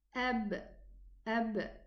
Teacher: the Two Lips colliding against each other pronouncing the letter b